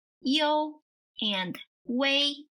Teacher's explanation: Although they're spelled as combinations of two vowels, they're actually pronounced as combinations of three vowels. So, IU is pronounced as IOU, and UI is pronounced as UEI.